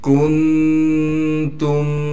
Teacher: کاف کو نون سے ملائیں گے تو اس میں نون میں اخفا یعنی غنہ کریں گے